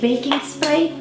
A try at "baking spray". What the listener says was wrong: Not baking it, baking, okay?